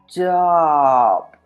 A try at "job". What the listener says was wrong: So again, you rounded your lips. so what you're going to try to do is try to open your mouth. So that you don't oh. Job.